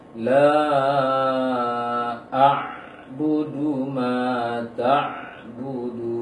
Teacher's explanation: Seharusnya yang dihadirkan adalah suara ainnya, bukan huruf sebelumnya. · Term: ain sukun